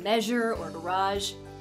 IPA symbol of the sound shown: ʒ